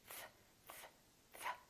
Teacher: the tongue is touching your upper teeth f f f and there's an air flow coming out while the tongue is touching the upper teeth